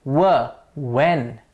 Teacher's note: Both the lips come forward to give us w. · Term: bilabial sounds